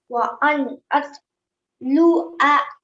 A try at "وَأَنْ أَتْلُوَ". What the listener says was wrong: Okay, at the moment you're saying like an alif with a fatha. Yes, luwa. And then if we're pausing at the end of this word, then this fatha will become a sukoon on top of the waw. And now we would read it as wa an atlu.